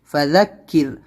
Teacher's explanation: یہاں پر را کو پتلا پڑھنا کیونکہ اس سے پہلے زیر ہے